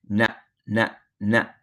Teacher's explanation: na is just basically the top portion of the tip of the tongue touching the hard palate